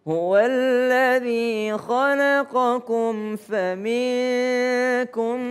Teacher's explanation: Mim ketemu dengan fa dia tidak berdengung.